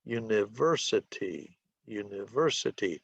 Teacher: University has 5 syllables. The stress is on the third syllable. It is a 5-3 word.